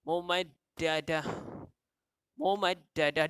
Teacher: Tanwin bertemu mim. Idgham ma'al gunnah yang mana mempunyai dengung.